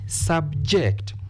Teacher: this word has been used as a verb therefore we stress the second syllable